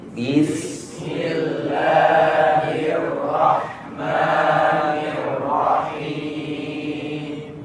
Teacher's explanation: pada saat pengucapan huruf ra itu makhraj hanya ada di ujung lidah dan permukaan setelah ujung lidah sedikit, tanpa kita menggerakkan bibir kita. Bukan berarti seperti r, karena bergeraknya bibir itu hanya di beberapa tempat, seperti di pengucapan waw, mim, ba, dan fa, dan juga di beberapa kondisi.